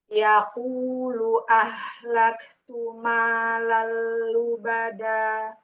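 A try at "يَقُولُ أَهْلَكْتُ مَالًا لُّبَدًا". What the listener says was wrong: Jangan tebal. Ahlaktu malal lubada. Jadi ingat tumalal. Ini tebal. tumalal lubada. Nah, hati-hati di situ diulang. Huruf istifalnya jangan dinaikin la, ka, gitu.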